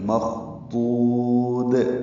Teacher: اور یہ پر ہے، دو وہ مدہ ہے، پیش کے بعد وہ ساکن آنے کی وجہ سے مخضود. اور آخر میں دال ساکن وقفاً اس پہ قلقلہ ہوگا، اور یہ دال باریک ہے